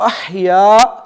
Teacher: تو تھوڑا سا لمبا کریں گے، اموتو و احیا، ہا کہاں سے نکلے؟ گلے کے درمیان والے حصے سے نکلے گی، بالکل کہیں پہ وا ٹکرائے گی نہیں۔